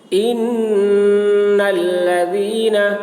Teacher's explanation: نون مشدد ہے، نون میں غنہ ہوگا، یعنی نون کی آواز کو ناک میں لے جا کر گنگنائیں گے۔